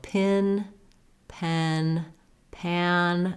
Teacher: My jaw is the most open for the ah vowel, and mid open for pen, and most closed for pin.